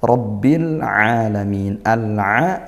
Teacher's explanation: izhar qamariah. Al-nya dibaca jelas. · rnya fathah dibaca tafkhim. tebal